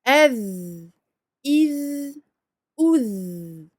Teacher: Vous devez sentir que ça vibre, le point de sortie du dhal, donc on sort le bout de la langue, et puis ça vibre et assez longtemps parce qu'on garde donc ce vel, on lui donne sa durée de rakhawa.